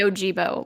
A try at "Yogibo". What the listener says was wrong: No, no, no. I think it's the hard G.